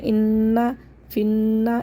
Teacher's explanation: دو نون آ رہے ہیں یہاں پہ مشدد، ان دونوں پہ غنہ کریں گے